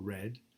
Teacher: a post-alveolar approximant as in red